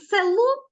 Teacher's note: перший звук е звучить ненаголошено І він у вимові наближається до звука и